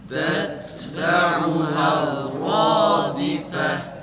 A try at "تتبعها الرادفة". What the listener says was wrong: Hayır, ra'ya bağlayalım.